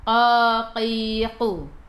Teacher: pangkal lidah menyentuh lelangit lembut dekat dengan anak tekak kita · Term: huruf qaf